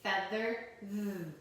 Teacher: when we feel our throat when we say it, it vibrates. So that's the voiced sound of th.